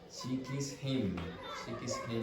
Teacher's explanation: She kissed him. See, it goes down.